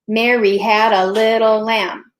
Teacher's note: It's actually iambic because it ends on that stressed syllable.